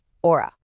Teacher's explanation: that H at the start of haciendo is totally silent to the ear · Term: silent H